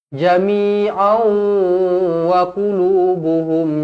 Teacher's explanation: tanwin tak selari bertemu dengan wau idgham maal gunnah dengung dua harakat